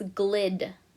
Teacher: It ends in a consonant. The vowel is closed in. It's short, so I write C for closed.